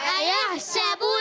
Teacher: با کو لام سے ملائیں گے، لام کو ہلائیں گے نہیں. با پر ہونٹ گول ہو جائیں گے · یا کو ہا سے ملائیں، ہا کو کلیئر کریں گے حلق کے درمیان والے حصے سے. سین پر زبر ہے، حرکت ہے، سیٹی کے ساتھ ادا ہوتا ہے سین